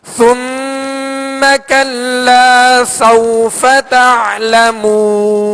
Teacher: سوفا یہاں واو لین ہے، لہذا نرمی کے ساتھ ادا کریں گے